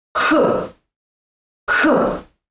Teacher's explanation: In English, the sound is aspirated, and in Russian, the tongue is pressed to the hard palate, and on the exhale, you get the sound H. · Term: the letter H